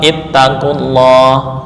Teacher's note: Hasilnya adalah bacaan huruf qaf berharokat dhammah langsung bertemu lam tasydid karena lam didahului oleh dhammah. Maka lam pada lafal Allah dibaca tebal sesuai kaidah.